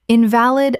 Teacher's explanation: in-val-id, stress on second syllable.